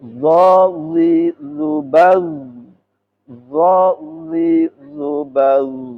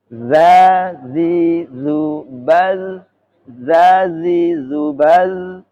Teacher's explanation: zo lebih gemuk dari zal